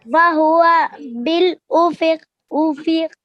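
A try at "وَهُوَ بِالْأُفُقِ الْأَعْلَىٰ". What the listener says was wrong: اوفو نہیں, دونوں پہ دم ہے نا, دونوں پہ دم ہے. بالافق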